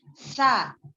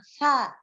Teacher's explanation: Kalau sin nggak boleh keluar. Kalau sa itu keluar.